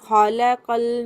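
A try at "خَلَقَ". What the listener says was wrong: खलकल, एक सेकंड, खलकल के बजाय खलकल, ख को भी पुर कीजिए। खलकल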